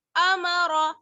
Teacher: را کو پر پڑھیں گے زبر کی وجہ سے